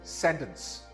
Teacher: This word is not sentence. The stress is on the first syllable. This is sentence.